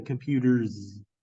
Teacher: this s sounds like a z and so therefore the Z is the fricative